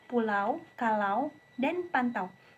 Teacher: Bunyi ini dimulai dari vokal A dan meluncur ee ke vokal belakang tertutup u. Pada awal pengucapan, bibir tidak bundar kemudian menjadi bundar di akhir bunyi. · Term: diftong au, diftong AU